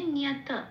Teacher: এটাকে একটু অর্ধত ত বলে ছেড়ে দিতে হবে, একটুখানি ট উচ্চারণ করেই ছেড়ে দিতে হবে, মানে নিয়াত এরকম।